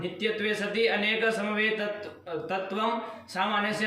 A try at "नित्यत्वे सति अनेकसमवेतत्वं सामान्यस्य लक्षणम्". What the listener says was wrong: तत्वम फतवम अलग से नहीं सुनाई देना चाहिए पंडित जी, साफ साफ एक बार में बोलो।